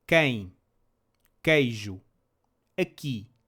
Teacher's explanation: It is always read the same, like a K in English, but the way you read the U after it changes. If the QU comes before an I or E, the U is silent.